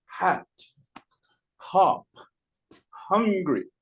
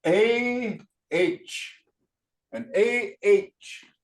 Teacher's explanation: the H does not have that puff of air it has a guttural sound